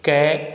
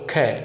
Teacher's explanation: कै बोलेंगे और ख बोलेंगे, हवा किस में ज़्यादा निकलेगी, कै और ख। तो ख में ज़्यादा निकल रही है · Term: महाप्राण